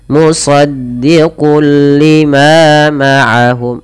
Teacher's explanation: Idgham artinya memasukkan, cara membacanya masukkan tanwinnya kepada huruf lam. Musaddiqul baru dilepas. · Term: idgham bila gunnah